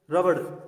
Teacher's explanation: र जो कि एक कंपनजात व्यंजन है, ड़ जो कि एक ताड़नजात व्यंजन है, इन दोनों का इसमें प्रयोग हुआ है। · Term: कंपनजात व ताड़नजात व्यंजन